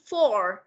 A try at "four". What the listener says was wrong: Four, not four. Not four. It's four. Không, không phải. Con đừng có đọc luyến quá. Con cứ đọc four cho cô là được.